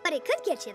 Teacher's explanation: the T sound in but stands between vowels and so it turns into a flap T